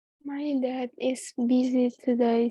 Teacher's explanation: Bacanya busy, S-nya seperti Z.